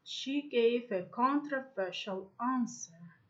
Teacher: in its stress word it's usually the syllable with main stress prominence can move to the secondary stressed syllable in a word like controversial when it is followed by a word with another prominent syllable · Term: stress shift